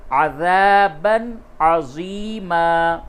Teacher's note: وَأَعَدَّ لَهُ عَذَابًا عَظِيمًا، عَذَابًا، تنوین کے بعد عین ہے، اور عین حروف حلقی میں سے ہوتا ہے، اس لیے یہاں پہ اظہار ہوگا